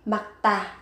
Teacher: Makta thì các bạn cần chú ý, các bạn gấp đôi phụ âm tờ lên.